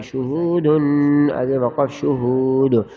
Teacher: آخر میں وقف کی حالت میں قلقلہ ہوگا اور ہم دال کو ظاہر کریں گے